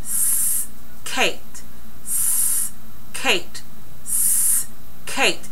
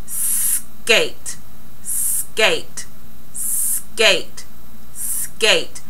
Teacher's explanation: when you make your S sound, your tongue is at the front of your mouth. Then when you go to K, it has to go to the back. And you've got to allow for enough time for your articulators to actually follow through on how those sounds are made.